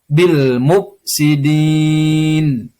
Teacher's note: Dalam kaidah ilmu tajwid itulah yang disebut dengan mat arid lis sukun. Cara membacanya adalah memanjangkan bacaan 5 sampai 6 harokat.